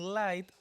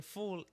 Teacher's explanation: L in light is clear. L in full is dark a lot. They never appear in the same place.